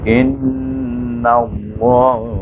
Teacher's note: Nun di atas na, tapi nun ini baris di atas ni bertemu dengan nama Allah Jalla Allah, kita kena baca dengan di mana dalam nama Allah ni ada alif lam samsiah, kena baca dengan idgham samsiah, iaitu huruf nun kita masuk dengan huruf lam di sana · lam dibaca dengan tebal kerana sebelum nama Allah baris di atas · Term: lam tebal